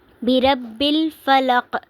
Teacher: فلق قاف پہ وقف کی صورت میں قلقلہ ہوگا کیونکہ قاف ساکن ہو جائے گا تو اس پر ہم قلقلہ کریں گے۔